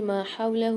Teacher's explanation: ما حولہ یہ جو الٹا پیش ہا کے اوپر آ رہا ہے اس کو ہم 1 الف کی مقدار کھینچ کے پڑھتے ہیں